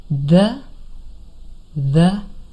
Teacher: And you can actually feel this. So if you put your hand very lightly on your throat and you say the, you can feel light vibration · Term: voiced TH sound